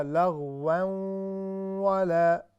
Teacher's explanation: یہ لفظ جو ہے لغو کی بجائے یہ ہوگا لغوا ولا، چونکہ اس میں ادغام ہے اور ادغام مع الغنہ، یہاں پر جو ادغام ہو رہا ہے اس میں غنے کی بھی جو ہے آواز آئے گی